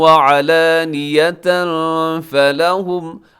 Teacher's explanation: علانیۃ پہ تنوین کے بعد فا ہے، یہاں اخفاء کریں گے